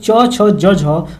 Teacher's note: स्पर्श संघर्षी व्यंजन का जिसको बोलने में थोड़ा जीभ को स्पर्श करना पड़ता है। तो स्पर्श संघर्षी कहते हैं।